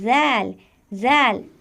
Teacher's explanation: जाल बहुत नरमी से अदा होगा और तभी सही अदा होगा जब जबान की नोक सामने वाले दांतों के किनारे पर लगेगी और यह हर्फ भी बारीक है जाल जाल जब हम जाल